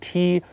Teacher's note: roof of our mouth and then breaks off of it and we let out a little bit of air as well